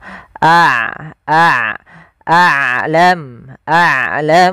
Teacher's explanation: ain tidak terlalu ditahan dan tidak terlalu dialirkan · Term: sifat bainiah